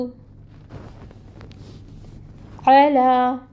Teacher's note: وسط حلق سے نکالیں اور فتحہ 1 کاؤنٹ پڑھیں